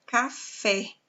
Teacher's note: a sílaba forte em Fé então nós temos a classificação de uma oxítona